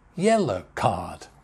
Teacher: Two syllables, yellow, yellow card. So, main stress on yellow, yellow card.